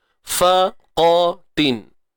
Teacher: fa nipis, qa tebal selamanya, isti'ala, angkat pangkal lidah